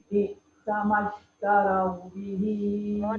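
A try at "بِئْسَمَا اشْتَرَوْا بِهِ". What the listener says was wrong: tebalkan. Bi'sa mashtarau bihi. Tarau. Dia tapak dia bukan ra. Dia bukan tarau. Tarau. Ro terus tebal. Taro. Taro. Taro. Taro. Bihi.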